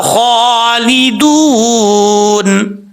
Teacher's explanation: مد واو جو ہے وہ مدہ ہے، 1 الف کی مقدار، اس کو لمبا کر کے پڑھیں گے. مد عارض وقفی کرنا چاہیں، مد عارض وقفی کی صورت میں یہاں پہ 2.5 الف کے برابر آپ اس کو لمبا کر سکتے ہیں.